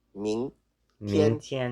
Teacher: the G is not pronounced and it's only used to fully nasalize the N